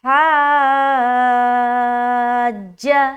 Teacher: آگے چلیں گے، تو پہلے اسٹریچ کرنا ہے اور اسٹریچ کرتے ہوئے آواز کو بالکل بھی بریک نہیں کرنا، بیچ میں جیم میں ملا دیں گے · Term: مد لازم